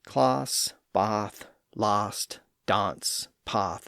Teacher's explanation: When that a vowel sound appeared before certain consonant sounds like the s sound s and the f sound th and the th sound th. The a sound once again lowered to ah thereby giving us the pronunciations associated with southern England today.